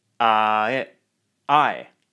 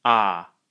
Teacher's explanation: the vowel in my and ride is a diphthong basically meaning that the vowel shifts from one to another within a single syllable I I in aave it's just one continuous vowel sound ah